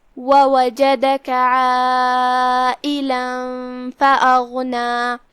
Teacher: یہاں مد واجب متصل ہے کیونکہ یہاں مد اور اس کی وجہ جو کہ حمزہ ہے دونوں ایک ہی کلمہ میں ہے لہذا ہم اپنی آواز 4 مد کے برابر کھینچیں گے